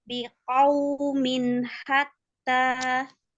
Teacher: bibirnya dimonyongkan di waw